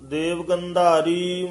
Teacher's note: ਗੰਧਾਰੀ ਧਦਾ ਬੋਲਣਾ ਗੰਧਾਰੀ ਦਦਾ ਵੀ ਨਹੀਂ ਕਹਿ ਜਾਣਾ